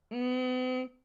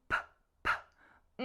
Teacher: during the M sound, there was a vibration, but the P sound had no vibration